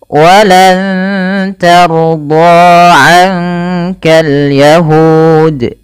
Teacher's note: huruf ro-nya dibaca dengan tebal karena ia huruf ra yang sukun didahului dengan fathah. Walan tarda bukan tarda, hati-hati bunyinya berbeda.